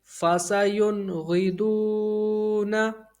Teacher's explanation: غین حرف حلقی میں سے ہے، یہاں اظہار ہوگا، یعنی غنہ نہیں کریں گے